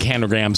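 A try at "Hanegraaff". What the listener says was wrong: You accidentally said Hanegram. Hanegram. Graph.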